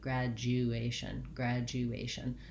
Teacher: i really go right from the j to the u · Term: glide sound